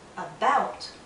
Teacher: in the word about the stress is on the second syllable but in the first syllable we have a a so in